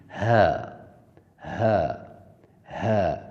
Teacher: حلق کے اندر والے حصے جو سینے کی جانب ہے وہاں سے اس کی آواز نکلے گی، جیسے ہ، ہ۔ حلق کا جو اندر پیچھے والا حصہ ہے جو سینہ کی جانب ہے وہاں سے اس کی آواز نکلے گی